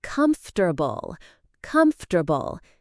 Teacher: Some people try to pronounce every letter like comfortable, but native speakers actually say it more like comfortable. The a in the second syllable is actually a schwa sound, which is a neutral vowel sound. · See how the second syllable isn't pronounced as for, it's more like a quick fur sound.